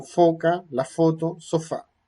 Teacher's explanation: se juntan los labios inferiores con los dientes superiores, labio dental, hay un cierre, una estrechez que deja pasar algo de aire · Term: labiodental fricativo áfono